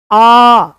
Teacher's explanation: जैसे ही आप आ बोलोगे जीभ पीछे की तरफ से थोड़ी सी ऐसे उठी हुई महसूस होगी, हल्की सी आ, एक पीछे उभार सा महसूस होगा, और उस उभार पर ही आपको आ बोलते हुए महसूस होगा। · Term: पश्च स्वर